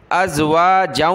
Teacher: پیچھے جو جیم تھا جس پر دو زبر ہیں، اس جیم کو ہم نے واو کے ساتھ ملایا